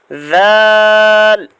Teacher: دال ذال اوپر والے دانتوں سے، زبان کی نوک اور اوپر والے دانتوں کا سرا یعنی زبان کی نوک اور ثنایا علیہ کا کنارہ، اس کو کنارہ کہتے ہیں. یہاں سے ذال ادا ہوتا ہے